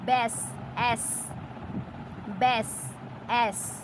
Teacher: এই যে জফলা এখানে কিন্তু এ রূপে উচ্চারিত হচ্ছে